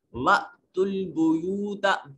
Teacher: बा में हमजा जो है ये झटके से अदा होगा, हमजा साकिन है